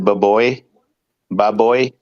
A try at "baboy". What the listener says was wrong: no, you say it like not too fast, like baboy, like that. You were saying it baboy.